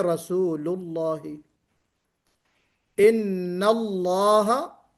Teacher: लफ्ज जलाला के लाम से पहले अगर पेश हो दम्मा तो भी हम उस अल्लाह के लाम को मोटा पढ़ेंगे। जैसे रसूलुल्लाह, इन्नल्लाह, यहां पे लफ्ज अल्लाह के लाम से पहले जबर है नून के ऊपर, इन्नल्लाह।